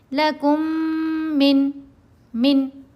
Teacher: نون کو ظاہر بھی کیا، نون کی آواز سنائی دی نا صاف، اور اس کو ہم نے لمبا بھی نہیں کھینچا، جلدی پڑھ لیا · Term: اظہار